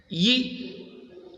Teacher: Now, the Y sound, in the production of Y, the front of the tongue is raised towards the hard palate · The lips are wide spread while the vocal cord vibrates. Okay, that is ye, you spread your lips wide. · the front of the tongue is raised towards the hard palate to a position slightly higher than it takes for the production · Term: palatal consonant, voice palatal semi vowel